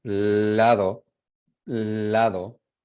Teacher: Y dice lateral porque el aire pasa por los lados de la lengua. Entonces, si dicen lado, you see that you feel the air wrapping around your tongue.